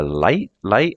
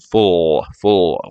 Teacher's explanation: L like light light light your tongue is at the front for a full or a dark L it feels like the back of the tongue is raised